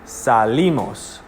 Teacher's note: So it's the I. So there's no accent mark, but you still say the accent on the I. Salimos. So salimos or salimos are both wrong because the accent falls on the I.